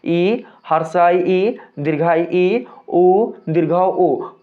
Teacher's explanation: लेकिन अगर हम में स्वर वर्णमाला में आने वाले हर्ष ई दीर्घ ई, ह्रस्व उ और दीर्घ ऊ को ले लें। तो दोस्तों इन चार वर्णों के उच्चारण में हमारा जो मुख होता है वो पूर्ण रूप से खुल नहीं पाता है। · इन 4 वर्णों के उच्चारण में हमारा जो मुख होता है वो पूर्ण रूप से खुल नहीं पाता है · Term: संवृत